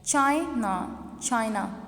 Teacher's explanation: स्ट्रेस हमने first one syllable पे दिया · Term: प्राइमरी स्ट्रेस